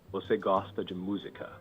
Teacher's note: Pronunciation, pay attention to a more declarative tone at the end. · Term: affirmative form